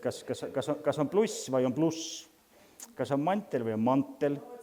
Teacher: See on see pehmehüs, mida eesti keelen üteldas palatalisatsioon, mida meil on palju rohkem.